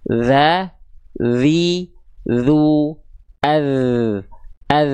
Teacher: Jadi ujung lidah kita disentuhkan ke ujung gigi atas kita ya. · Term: huruf dzal